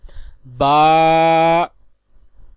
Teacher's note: فا کا مخرج ہے اوپر کے دانتوں کے کنارے اور نچلے ہونٹ کے تر حصے سے ادا ہوتا ہے، جیسے فا۔ نیکسٹ با، دونوں ہونٹوں کے تر حصے سے ادا ہوتا ہے